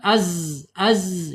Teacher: Ya, ketika dia sukun harus ada suara desisan.